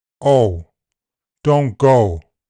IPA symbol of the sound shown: oʊ